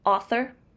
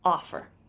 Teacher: In African American English, the f is often used to replace the voice th when it occurs in the middle or at the end of word.